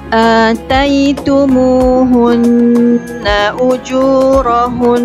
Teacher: Pada perkataan ujurahun, mesti sempurnakan gunnahnya 2 harakat.